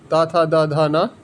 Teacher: ता वर्ग के अक्षर त थ द ध न ल और स ल और स ये दंत से बोले जाते हैं